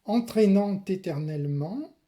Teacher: c'est une cacophonie consonantique de liaison, ici en T